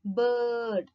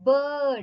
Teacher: the center of the tongue is raised in the direction of the part of roof of mouth between the hard palate and soft palate to a height between half close and half open position . Lips are spread. So bird, அப்படின் சொல்லி பாத்தீங்கன்னா lips வந்து